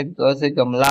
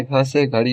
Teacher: सघोष अल्पप्राण ग से गमला होता है और सघोष महाप्राण घ से घड़ी होता है।